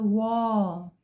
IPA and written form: wɒl (wall)